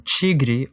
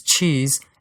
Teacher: two more familiar sounds that basically combine a sh or a j sound with a t or a d respectively